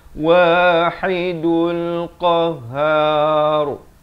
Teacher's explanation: dan ra di akhir dibacakan tebal. Siapa baca qahhar tak betul, dia kena baca qahhar, har, dibaca tebal di akhir itu.